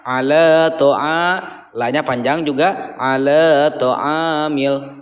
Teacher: Ala to'a A-nya itu dibaca 2 harokat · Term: mad tabii